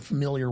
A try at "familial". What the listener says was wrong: Familial wealth? You said familiar. Familial.